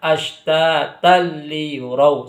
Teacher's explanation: Nah, ketika ada tan fathatain bertemu dengan huruf lam, maka itu dinamakan dengan idgham bila ghunna. Idgham dengan tanpa dengung. Jadi langsung dimasukkan tidak disertai dengan guna. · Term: idgham bila gunnah